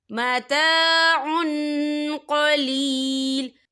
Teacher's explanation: قوف جو ہے اکفا کا ورڈ ہے، تو ہم یہاں اکفا کریں گے، تنوین کی آواز کو ناک میں چھپائیں گے